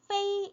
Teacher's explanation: 또 옆에 보시면은 퍼이로 읽어야 될 것 같아요. 원래대로 배운 대로 읽자면은 퍼이지만 네, 에로 소리가 바뀌어서 페이 이렇게 소리가 나는 겁니다.